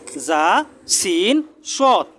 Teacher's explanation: জিহ্বার আগা সামনের নিচের 2 দাঁতের পেট ও আগার সঙ্গে লাগিয়ে